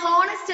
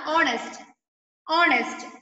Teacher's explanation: in words like honest and hour, the letter H is silent. So, the words begin with the vowel O.